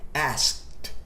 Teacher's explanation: Ask. Não tem vibração da corda vocal. Então o ED vai ter o som de T.